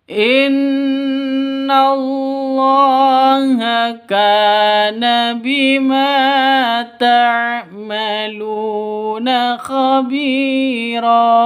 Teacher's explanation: Khabi panjang dua ketukan karena ada ya mati diawali dengan kasrah, mad asli atau mad tabi'i.